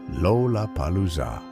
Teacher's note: it contained not one, not two, but four L sounds, each perched at the beginning of a syllable